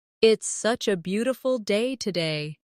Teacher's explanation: Stress beautiful to express the feeling.